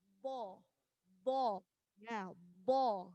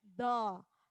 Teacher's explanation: Jadi pengucapannya bo itu jangan sampai da, tapi bo. Ujung lidah ini menempel di gigi atas.